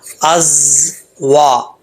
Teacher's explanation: واو کو پڑھتے وقت ہونٹ گول کریں گے، واو کے آگے الف ہے، ایک الف کی مقدار اس کو لمبا کریں گے، از وا۔ یہاں پر یہ اس چیز کا آپ نے خاص خیال رکھنا ہے کہ زا کو پڑھتے ہوئے بغیر سیٹی کے نہیں پڑھنا، اگر بغیر سیٹی کے پڑھیں گے تو سمجھ لینا کہ زا جو ہے وہ صحیح طریقے سے اپنے مخرج سے ادا نہیں ہوا۔